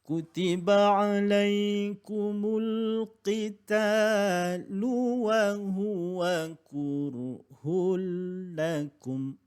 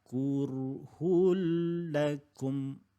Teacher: bila tanwin dimasukkan dalam huruf lam, maka dia bila gunnah, maknanya tidak ada dengung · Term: idgham bila gunnah